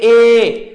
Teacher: ਐਸੇ ਤਰ੍ਹਾਂ ਸਾਥੀਓ ਆਈ ਪਹਿਲਾਂ ਮੈਂ ਤੁਹਾਨੂੰ ਲਿਖਾ ਚੁੱਕਿਆ, ਆਈ ਨਹੀਂ ਇਹ ਆਊਗਾ ਏ, ਕਿਉਂਕਿ ਬੋਲ ਕੇ ਵੇਖੋ ਅਗਲੇਰੇ ਏ, ਕਾਫੀ ਜੀਭ ਅੱਗੇ ਜਾ ਰਹੀ ਹੈ